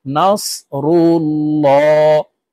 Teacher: আল্লাহ শব্দের আগের হরফে জবর অথবা পেশ হইলে এই লামকে ল অর্থাৎ মোটা করিয়া পড়িতে হয় তো এখানে দেখুন আল্লাহ শব্দের আগের হরফে পেশ হরকত আছে তাই